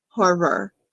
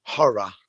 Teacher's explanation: gosh yes we definitely say that different because we pronounce in in american english we pronounce more of that ending r sound